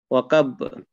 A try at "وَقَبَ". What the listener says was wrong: কব। আচ্ছা, কফের উচ্চারণ যেন কা না হয়, ক। কব।